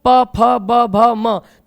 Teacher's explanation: प, फ, ब, भ तथा म, इनको उच्चारित करते हैं तो हमारे दोनों ओष्ठ जो हैं वो आपस में स्पर्श करते हैं, तभी इनकी ध्वनियां, ये ध्वनियां उच्चारित होती हैं।